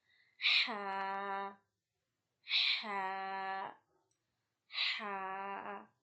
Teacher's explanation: This is pronounced from the middle of your throat. Middle of the throat is a point from where your bone of the throat is starting.